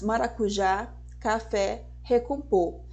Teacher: ela é oxítona quando a sílaba tônica é a última sílaba da palavra